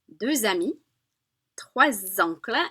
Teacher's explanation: so common liaison is that Z sound